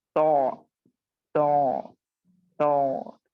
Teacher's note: जिनमें क्या होता है, सिर्फ जबान की जड़ नहीं, जबान की रूट नहीं, बल्कि आप देखोगे कि जबान का दरमियान ऊपर के तालु के साथ लिपट जाता है। जब आप जबान को पीछे से एलिवेट करोगे तो आप देखोगे कि जो दरमियानी जबान है वो भी ऊपर के तालु से लिपट जाती है